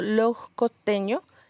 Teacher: Ahí es donde vemos la pérdida total de la S postvocálica o la S final.